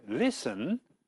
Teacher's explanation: in listen the t is written but not pronounced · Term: silent letters